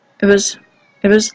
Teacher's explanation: It's very difficult to hear t there. It's not pronounced, and the vowel is a schwa.